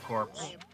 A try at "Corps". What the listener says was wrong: Core. It's core. The P is silent.